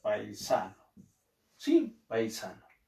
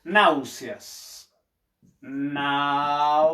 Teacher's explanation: Sílaba tónica de paisano. Sa, de náuseas, nau.